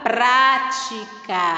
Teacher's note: está no começo da palavra essa palavra possui 3 sílabas e a sílaba tônica sendo a primeira que está no começo da palavra ela será chamada de proparoxítona · Esta sílaba aí está no início, no começo da palavra, né? A sílaba mais forte é o pra, está no começo da palavra.